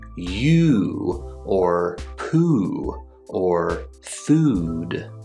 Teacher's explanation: the long oo sound in words like you or poo or food